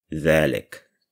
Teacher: because it's at the end of the sentence, you don't pronounce that fatha there.